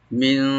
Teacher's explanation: মিন তাহতিহাল আনহার, মিন, মিন এখানে মি বলবো, আর নুন সাকিন এখানে আমরা ইখফা করব, মানে লাইট গুণা করে পড়বো আমরা